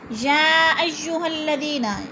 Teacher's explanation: یا پہ مد متصل ہے، 4 الفی مد ہے، 4 الف کے برابر ہم نے اس کو لمبا کر کے پڑھنا ہے